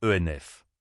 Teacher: Le N de un s'entend et se lie au mot suivant, ce qui donne ENF. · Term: liaison